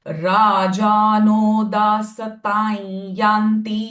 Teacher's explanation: Anuswara sound will become ya because following syllable is ya.